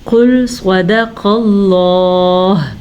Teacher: قل موٹی قاف, صاد کو پر پڑھنا ہے, قاف کو پر پڑھنا ہے, اور لفظ اللہ کو بھی پر پڑھنا ہے.